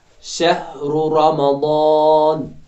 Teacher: را پر زبر ہے تو را موٹا پڑا جائے گا، میم کو جو ہے باریک پڑا جائے گا چونکہ اس میں صفت استفعال ہے۔ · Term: تفخیم